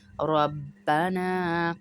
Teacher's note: را کو موٹا پڑھیں گے، پر پڑھیں گے، زبر والا را ہے